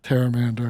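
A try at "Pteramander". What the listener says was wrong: Because that's when you like, no, I think you pronounce the P.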